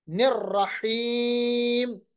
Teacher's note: حا کا جو مخرج ہے وہ وسط حلق ہے، درمیانی حصے سے ادا ہوتا ہے حلق کے. نررحیم، حا کو پھر سے وسط حلق سے اور یا کو لمبا کریں گے.